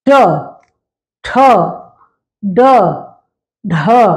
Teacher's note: अक्षरों का जो उच्चारण है वो उस स्थान से करते हैं तो मूर्धा से बोले जाने वाले वर्ण है